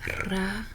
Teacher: Just the tip of your tongue on the front of your palate